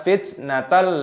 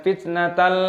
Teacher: tanwin bertemu dengan lam idgham bilagunnah dimasukkan tanpa berdengung